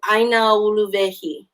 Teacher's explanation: If we say ʻaina into uluwehi, which uluwehi does not have an okina on the front of that U, I want to blend those vowels together into the next word.